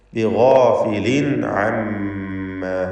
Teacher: ശേഷം ഐന് വന്നതുകൊണ്ട് ഇൽഹാർ ഹൽക്കി നൽകി തൻവീനിനെ വെളിവാക്കുക.